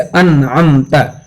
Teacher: आपको इसके पहले भी बतलाया जा चुका है कि गुन्ना दो तरह का होता है, एक गुन्ने ज़मानी होता है और एक गुन्ने आनी होता है, यानी वक्ती और फौरी तौर पे गुन्ना होता है और ख़त्म हो जाता है, नाक में आवाज़ जा कर के ठहरती नहीं, फौरन ख़त्म हो जाती है